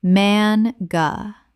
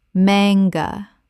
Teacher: Two syllables with the stress on the first. The A is short, not long.